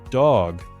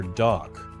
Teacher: Same tongue, same position, same closure. G is voiced, K is not. So when the last sound is voiced, carry the buzz all the way through the ending and let it finish there.